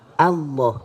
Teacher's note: Jadi yang tafkhim lamnya, A-nya tetap biasa A.